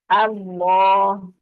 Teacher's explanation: آ کو پر نہیں کرنا، یعنی حمزہ کو پر نہیں کرنا، اللہ نہیں کرنا، آ کو باریک رکھنا ہے۔